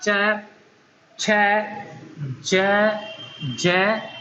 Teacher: जब इन वर्णों का उच्चारण किया जाता है तो अंदर से निकलने वाली जो प्राण वायु है स्पर्श भी करती है और संघर्ष करके बाहर निकलती है। इस आधार पर इनको स्पर्श संघर्षी व्यंजन कहा जाता है।